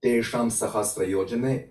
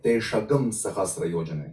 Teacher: So, for example, Anusvara before sh, s, h, or hak, and r, is changing into g. So this inserted sound is actually g. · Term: Agama Anusvara